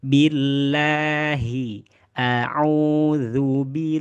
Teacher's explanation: huruf ha ini ada di bagian mana? ada di bagian pangkal pangkal tenggorokan sama dengan hamzah · billahi bacaannya ada mad thobi'i. Maka bacaannya tidak boleh masuk ke rongga hidung cukup di bagian rongga mu mulut.